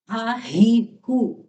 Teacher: اور یہ حلق کے آخری حصے سے انہیں ادا کرنا